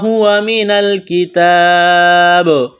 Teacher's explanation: ہوا من الکتاب، نون لام زبر نل، نون کو لام کے ساتھ ملائیں گے، لام کے اوپر جزم ہے، لام ساکن ہے، یہاں جب وقف کریں گے تو با کو ساکن کریں گے، با پر قلقلہ کریں گے۔